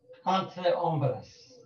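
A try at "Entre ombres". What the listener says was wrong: Entre, no. Entre, no, it's not entre. This is not French. It's entre hombres.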